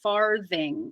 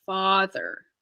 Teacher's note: that TH after the R is voiced